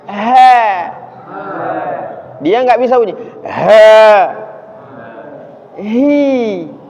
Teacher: Huruf ha makhrajnya di pangkal tenggorokan.